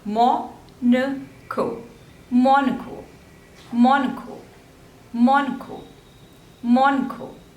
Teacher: So there are 3 syllables and stress is on the first one.